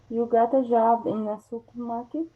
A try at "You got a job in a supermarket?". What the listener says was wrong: Very good. So you can see how the intonation changes when it's a question.